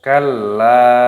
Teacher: Jangan dibaca kala tanpa tidak ditekan, tidak boleh. Harus ditekan, dimasukkan. Kalla dan dipanjangkan. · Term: tasdid